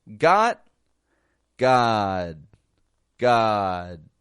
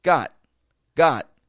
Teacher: not pronouncing the final letter I'm not pronouncing that stop consonant I'm stopping the stop consonant however what I am doing is lengthening the vowel